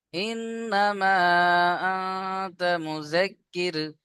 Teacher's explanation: ইন্নামা দুই থেকে তিন আলিফ টান দিতে হবে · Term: মাদ মুনফাসিল